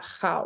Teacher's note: So like if I did say how, I would probably have a little bit of that rasp, how, like, that my vocal cords were used to making that sound as a Klingon.